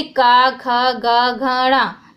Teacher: ये सारे कंठ से निकलते हैं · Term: कंठ्य ध्वनि